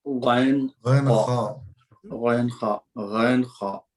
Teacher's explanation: ये दोनों में गैन खौफ जो हो रहे हैं, ये इसमें जो है आपको आखिर में खरखर पने की आवाज निकल रही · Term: इंतहाई